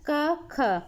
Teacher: गले से आवाज़ आ रही है ना, तो गले से आवाज़ आ रही है तो कौन से हो गए, कंठ्य हो गए।